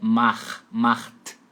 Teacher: CH você vai fazer meio rasgadinho assim, macht. A regra para isso é porque CH está depois da letra A.